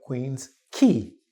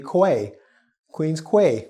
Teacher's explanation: The quay sound is a K sound, not a kwa sound.